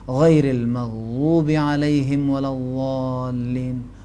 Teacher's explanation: موٹا دال زبان کو سائڈ والے کنارے اوپر والے داڑوں سے لگا کر ادا کریں، یعنی آسان، وہ ایک آسان بات ذہن میں یہ ہونی چاہیے کہ زبان کو سائڈ پہ لگا کر ذرا بھاری اور پرحجم ادا کرنے سے یہ حرف صحیح ادا ہوگا۔